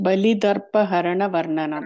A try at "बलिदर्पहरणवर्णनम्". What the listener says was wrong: Varnanam. Yeah, don't stress in the da. Okay? It is not Mahaprana.